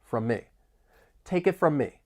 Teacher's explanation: We also have overlapping m sounds from me. It almost sounds like one word